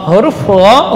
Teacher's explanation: huruf yang keluar dari min adnal halqi, ujung tenggorokan. Adna, si ujung.